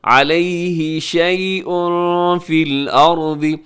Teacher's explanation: شیء پہ تنوین ہے، تنوین کے بعد فا ہے تو اخفا ہوگا